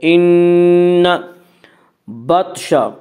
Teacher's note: ان بطش، طوا میں قلقلہ ہوگا، طوا حروف قلقلہ میں سے ہے